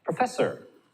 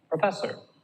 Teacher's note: Can you hear how fess is louder than the first and the last syllable? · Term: primary stress